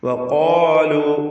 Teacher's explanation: ഖാഫിനും അലിഫിനും തഫ്ഖീം കൊടുക്കണം. ദീർഘാക്ഷരമായ അലിഫിലും തഫ്ഖീം കൊടുത്ത് തടിപ്പിച്ചുച്ചരിക്കുക.